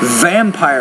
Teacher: with the V with more vibration